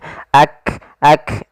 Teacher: Hames adalah mengalirnya nafas ketika melafalkannya. Ak ak ada nafas yang dikeluarkan.